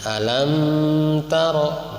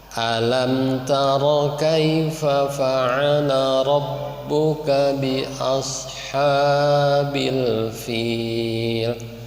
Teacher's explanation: ada mim mati itu tidak boleh ditahan ya kalau menghadapi ta. Jangan alam taro, tapi alam taro kaifa fa'ala rabbuka bi ashabil fil.